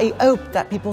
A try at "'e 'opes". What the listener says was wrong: He hopes. So he's over-exaggerated the O on hopes. He's dropped the H, but he's gone... But we would just say he hopes, not hopes with the exaggeration at the beginning of the O.